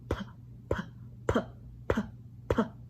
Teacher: you should feel a tuft of air come out of your mouth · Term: sangbiep